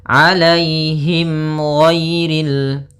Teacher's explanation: ada mim mati bertemu dengan huruf ghain. Maka dinamakan dengan izhar syafawi. Maka harus jelas suara mimnya.